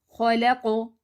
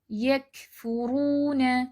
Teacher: قاف کی آواز موٹی اور جھٹکے والی ہوتی ہے جیسے خلقو۔ کیف کی آواز باریک اور بغیر جھٹکے والی جیسے یکفرون۔